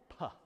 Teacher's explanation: the opening consonant, a simple p sound, what linguists call a voiceless bilabial plosive